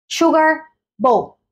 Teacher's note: elevamos la entonación al principio